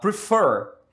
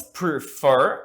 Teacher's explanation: E a sílaba tônica é a última.